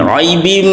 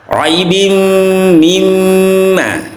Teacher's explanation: di sini ada idgham bi gunnah karena ada tanwin bertemu mim, juga ada gunnah 1/2, raibim mimma gunnah.